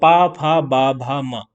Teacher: दोनों होठ जो है हमारे वह आपस में क्या हो रहे हैं जुड़ रहे हैं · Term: ओष्ठ